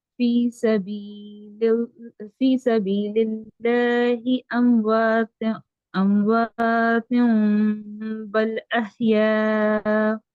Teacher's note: نون کو میم سے بدل کر پڑھتے ہیں